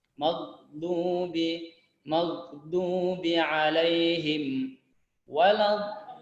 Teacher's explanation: Ghoinya terkadang diqalqalakan padahal itu bukan huruf qalqalah. Ya, dia harus dibaca lengket ya. Tidak boleh dilepas ketika membaca maghdu. Kapan lepas sedikit menjadi qalqalah.